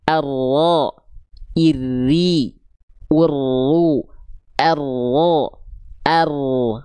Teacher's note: ujung lidahnya nempel ke langit-langit, punggung lidahnya nempel ke langit-langit bagian depan, ya, diseret ke dalam, ditempel, diseret ke dalam, agak disimpangkan sehingga getarannya akan terminimalisir, nggak terlalu gitu, nggak akan gitu, ya. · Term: inhiraf